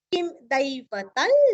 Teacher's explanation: अनुस्वार का उच्चारण ल आया है, हल्का सा ल